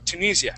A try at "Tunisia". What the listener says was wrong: Yeah, Tunisia, good.